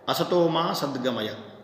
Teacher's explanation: यहाँ पर जो माँ शब्द पढ़ा गया है उसका जो स्वर है वो उदात्त है